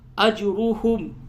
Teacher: جیم پہ قلقلہ ہوگا، را کو پڑ کیجیے